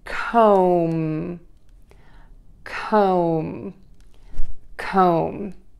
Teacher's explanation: O, co. End with an M, by pressing your lips together